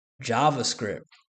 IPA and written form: ˈdʒɑːvəˌskrɪpt (JavaScript)